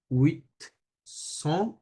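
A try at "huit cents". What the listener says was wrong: উইথ না, উই বলতে হবে, হ্যাঁ? এখানে একটু চেঞ্জ আছে। লাইক যখন HUIT বানানটা এরকম, তাই না? আমরা যখন আলাদা করে পড়বো মানে 1 2 3 করে তখন হবে উইথ, তখন টি সহ উচ্চারণ হবে। বা যখন 800 শুধুমাত্র এই সংখ্যাটাতেই, হ্যাঁ? 800 যখন হবে SENT স মানে হচ্ছে 100, তাহলে তখন উইথ স বলা যাবে না, এই টিটা তখন স্কিপ করতে হবে, হ্যাঁ? ওই সাউন্ডটা আসবে না, উই স বলতে হবে। উই স,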